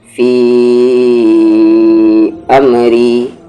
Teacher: جب ان دونوں کو ایک ساتھ پڑھیں گے تو فی کو کھینچیں گے، فی امری. لیکن اگر فی پر وقف کر دیا جائے یعنی فی کو ہم الگ پڑھیں، رک جائے وہاں پر، اور پھر امری کو الگ پڑھیں تو یہاں پر فی کو پھر کھینچیں گے نہیں، وقف کرنے کی وجہ سے وہاں پر وہ فی کا مد ہٹ جائے گا. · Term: مد منفصل